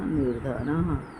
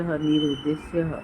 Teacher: विसर्ग से पूर्व अ आ को छोड़कर कोई भी दूसरा स्वर हो और वो स्वर वर्ण वर्ग के तृतीय, चतुर्थ, पंचम वर्ण अथवा य, र, ल, व, ये विसर्ग स्थान पर यहाँ पर र हो जाता है, आधा र